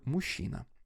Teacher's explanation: Возле звука «у» находится ненапряженная огубленная гласная, которая обозначается перевернутой омегой. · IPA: [ʊ]